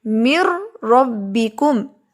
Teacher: را ان حروف میں سے ہے جہاں پر غنہ نہیں ہوتا، تو یہاں ہم کہیں گے کہ ادغام بغیر غنہ ہو رہا ہے، ادغام تو ہو رہا ہے لیکن غنہ کے بغیر۔